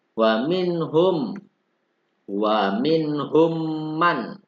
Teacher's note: hukum mim sukun diikuti dengan mim. Cara membacanya yaitu dengan guna 3 ketukan. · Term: idgham mimi